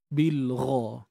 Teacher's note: yang diberanakkan untuk ghain kena tebal kat sini angkat pangkal lidah makhraj bagi huruf ghain ni di hujung kerongkong